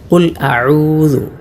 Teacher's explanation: ഐൻ പ്രത്യേകം ശ്രദ്ധിക്കേണ്ടതാണ്. തൊണ്ടയുടെ മധ്യഭാഗത്തു നിന്നുമാണ് ഐൻ ഉച്ചരിക്കുന്നത്. അതാണല്ലോ അതിൻ്റെ മഖ്റജ് അഥവാ ഐനിൻ്റെ ഉച്ചാരണ സ്ഥലം, ഉത്ഭവസ്ഥലം അഥവാ മഖ്റജ്.